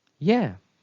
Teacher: a falling intonation was used and it shows certainty meaning that the speaker is certain that he can help